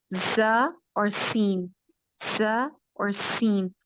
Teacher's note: ز اور سین, ز اور سین, اس کو قوت سے بولتے ہیں اور سیٹی کی آواز سے بولتے ہیں